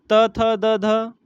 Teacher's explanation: त थ द ध यह अपने दंत्य व्यंजन